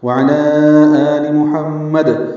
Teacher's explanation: آل میں آ مد بدل ہے، اور لام کی زیر جلدی پڑھیں گے، آل وعلی آل محمد، یہاں ہم نے وقف کر دیا آخر میں، تو دال ساکن ہوا، اس میں قلقلہ کر دیا